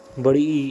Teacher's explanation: जीवा को मुंह से जितना संभव हो सके उतना ऊंचा और तालु के समीप रखा जाता है। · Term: संवृत स्वर